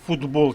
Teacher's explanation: дзвінкими вимовляються дзвінко тобто вони уподібнюються асимілюються до дзвінких зверніть увагу ми пишемо футбол через літеру Т але вимовляємо звук д